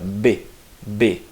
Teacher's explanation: Ela é plosiva porque o ar prende e sai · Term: plosiva pulmonar bilabial